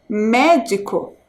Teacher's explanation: A sílaba mais forte, médico, é o me.